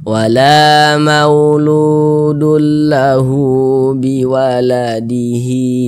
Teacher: ini juga namanya adalah madsilah qasirah panjangnya dua harakat